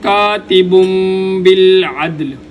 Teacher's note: تنوین کے بعد اگر با آ جائے تو یہاں پر تنوین کو میم کے ساتھ ملا کر پڑھتے ہیں